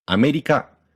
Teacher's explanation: In the Japanese word America, the first syllable is low, and the last three are high. America. And this is a sort of default melody for Japanese words.